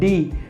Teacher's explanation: डी बोलने के लिए हमें जीभ को मोड़कर तालू से सटाना पड़ा